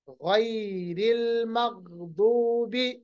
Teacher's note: غین اور ضاد دونوں حروف مستعلیہ موٹے پڑے جائیں گے